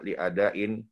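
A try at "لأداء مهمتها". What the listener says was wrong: jangan ditanwinkan li ada'i muhimmatiha muhimmah muhimmatiha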